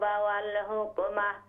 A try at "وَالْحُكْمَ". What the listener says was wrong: حکم نہیں ہا والحکم